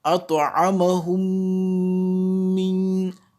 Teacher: la deuxième lettre va prendre cette fois-ci une shadda et un nasillement ou ghunna avec une nasalisation de deux temps. Notez bien à la différence avec l'ikhfa que nous avions vu précédemment, ici on appuie sur les lèvres. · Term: al-idgham